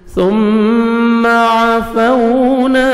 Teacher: عفونا عین کو اپنے صحیح مخرج سے ادا کریں گے، واو لین ہے لپس کو راؤنڈ میں لے کے جائیں گے، نرمی سے ادا کریں گے. الف مدہ 1 سیکنڈ نون کو کھینچیں گے. · میم مشدد ہے غنہ کریں گے، نوز میں ساؤنڈ لے کے جائیں گے